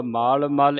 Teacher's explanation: ਇਹ ਸੰਗਤ ਜੀ ਪੋਲਾ ਪਾਠ ਹੈ ਮਲ ਮੱਲ ਨਹੀਂ ਕਹਿ ਦੇਣਾ